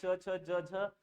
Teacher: च छ ज झ यांचा उच्चार तालव्य आणि दंत तालव्य